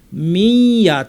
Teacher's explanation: ইয়া আসলে ইদগাম করতে হয় এবং গুন্না সহ। তাহলে মিন ইয়াকে আমরা পড়ব মিয়া।